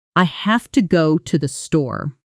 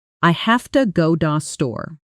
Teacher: Have to became hafta, and to the became almost da.